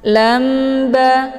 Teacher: Bunyi tanwin dibalikkan ke dalam bunyi mim sukun, sehingga yang kita dengar bacaan di sini adalah mim sukunnya ketemu ba. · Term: iqlab